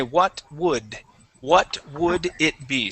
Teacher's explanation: now that d when you got to that d you pronounced it like a t sound